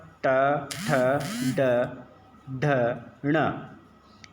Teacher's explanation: ट वर्ग ट ठ ड ढ ण ये मूर्धा से बोले जाते हैं